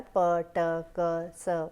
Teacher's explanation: voiceless are p, t, k, s, where there is less vibration or no vibration